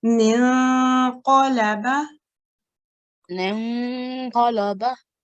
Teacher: the sound is a partial nasalization. So it's not very clear noon, it's a slightly hidden noon. And how you do that is bring your tongue slightly back when you're expressing this noon. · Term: ikhfa sound